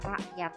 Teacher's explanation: K yang akhir itu diucapkan dengan jelas K mati, tapi ada juga alofon hamzah. Bunyi hamzah ini biasanya huruf K-nya tidak diucapkan secara jelas